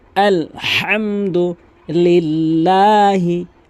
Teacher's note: আলহামদু লিল্লাহি লাম কিন্তু এক আলিফ টানবেন এবং হা অবশ্যই হলকের মাঝখান থেকে উচ্চারণ করবেন